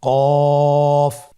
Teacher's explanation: কফের মাখরাজ হলো জিহ্বার গোড়া তার বরাবর উপরে তালুর সঙ্গে লাগিয়ে উচ্চারিত হয়